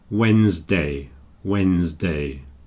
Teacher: Maybe a few people do pronounce the D, Wednesday, but it's an unusual collection of consonants in the middle there. So usually we just don't pronounce the D and we say Wednesday